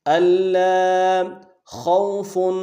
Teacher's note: اللہ خوف، خا کو واو کے ساتھ ملانا ہے، خا کو موٹا ادا کرتے واو کے ساتھ ملائیں گے، واو لین ہے، واو مدہ نہیں ہے، اس کو بغیر کھینچے پڑھیں گے · لام کے اوپر تشدید ہے، زور دیں گے اور اگلے لام کے ساتھ الف مدہ ہے، ایک الف دال میں کھینچیں گے